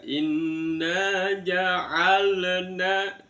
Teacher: Kalau dilepas berarti ada, kalau dalam bahasan ilmu tajwidnya itu adalah bacaan tawalud ya. Tawalud, seolah-olah lam itu bacaan kol-kola. Ja'alna, ditahan.